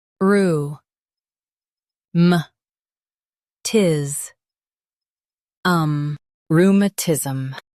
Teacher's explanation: Stress rheum and keep tis soft.